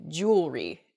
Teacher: the word kind of gets a little bit smushed together uh and we say jewelry instead we miss that that second e sound in there it should be jew ellery uh in a sample sentence maybe · We miss that second E sound in there.